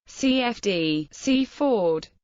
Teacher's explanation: the traditional Sussex pronunciation of the name has a full vowel in each syllable